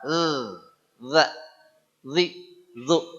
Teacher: Ujung lidah dengan ujung gigi seri atas kayak digigit. Ujung lidah ke belakang gigi boleh. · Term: huruf zal